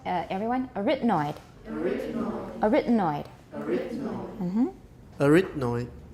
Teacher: Stress is on the second syllable.